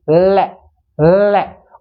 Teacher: ल ल को बोलेंगे तो जीवा है ना वो अपने मसूड़े को छुए गी ल ल और हवा दोनों साइड से जीवा के दोनों साइड